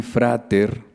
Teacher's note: en el latín frater conservo la sorda intervocálica t